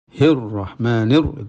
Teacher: ketika baca hir itu sudah ra itu ditebalkan. Bukan hir terus hir tipis terus ra tebal, tidak, tapi hir langsung menebal.